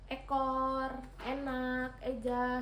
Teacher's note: vokal E madiah atas depan dengan posisi mulut semi tertutup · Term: vokal E madiyah atas depan